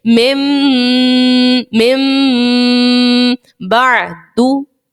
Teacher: کیسے پڑھو گے, میم نون میم زیر مم, غنہ ہم کر رہے ہیں, دیکھیں ناک میں آواز جا رہی ہے, ناک کے بانسے سے آواز نکل رہی ہے